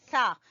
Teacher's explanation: सा जबान की नोक और सामने वाले दो दांतों के सिरे से